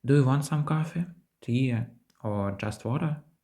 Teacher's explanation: Перша частина питання вимовляється з висхідною інтонацією, а друга – з нисхідною.